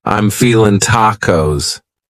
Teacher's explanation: cutting off that g